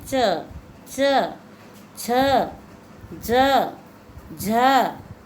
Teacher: ये वर्ण बिना तालु के हम नहीं बोल सकते, इसलिए इनको हम तालव्य कहते हैं